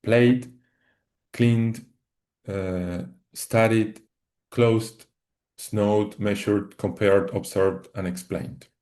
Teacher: So here we have some examples um that are uh pronounced and end and sound uh with a d at the end not with a t but with a d. So for for example play uh in the past sounds as played cleaned uh studied closed snowed measured compared observed and explained.